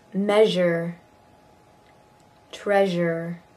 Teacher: Zh is also voiced. Measure. Treasure.